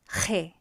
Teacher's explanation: it's same as he, but the sound is being produced in the throat